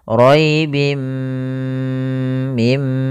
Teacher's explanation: memasukkan tanwinnya ke mim dan ditahan gunahnya · Yaitu langkahnya adalah memasukkan tanwinnya ke mim dan ditahan gunnahnya. Roibim mim, panjangkan dulu, tahan gunnahnya 2 harokat. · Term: idgham bighunah, idgham bi gunnah